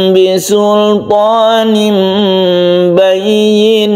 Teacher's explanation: Jadi asalnya itu memang dia itu sama-sama makhrajnya, yaitu di bibir antara mim dan ba. Oleh karena itu samarnya itu memang tidak ketara, tapi aslinya memang samar ini ya. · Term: ikhfa syafawi